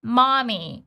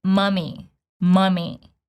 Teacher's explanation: this particular word has short neutral same as in schwa. So it's not mommy, it's mummy, mummy.